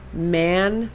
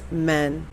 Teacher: when you say man it's a little bit higher in your voice versus men which is a little bit deeper